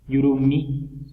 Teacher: yurumi suena por la nariz, pero la M ya le nasaliza la I